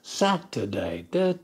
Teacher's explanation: the word Saturday has three syllables Saturday du the first syllable is stressed